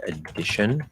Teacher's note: It doesn't matter if there's two Ds, it's just spelling. You never hold a double consonant inside of a word like that. It's always just spelling. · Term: strong D